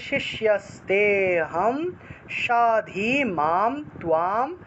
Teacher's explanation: তেতে গিয়ে একটা টান দিতে হবে, কারণ এখানে একটা লুপ্ত অ আছে